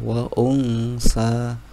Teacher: nun sukun bertemu dengan huruf Tsa maka dibaca ikhfa yaitu agak samar